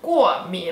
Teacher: 我对化妆品过敏, 4th tone, 3rd tone, 过敏